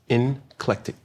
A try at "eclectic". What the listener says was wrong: There's no N in it.